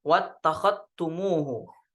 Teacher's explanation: Di riwayat Syu'bah biidghamidz dzali fit ta. Jadi diidghamkan, dimasukkan ke ta.